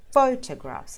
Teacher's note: the pho at the front is emphasized